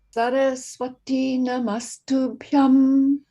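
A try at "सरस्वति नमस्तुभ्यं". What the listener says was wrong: Yeah, very nice, except there is no T break between Saraswati and Namastubhyam. So, otherwise it will, what should I say, interfere with the meter. Saraswati Namastubhyam.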